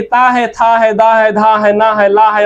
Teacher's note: ये सभी के सभी वर्ण दंत से बोले जाते हैं